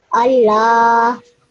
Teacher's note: Yeah, but because in this case the lam has a fatha, it does have a stroke on top, a fatha stroke, then that this alif has become a alif mad, and that means that I need to make the lam sound 2 seconds long